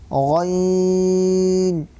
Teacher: حلق کے اوپر والے حصے سے غین ادا ہوتا ہے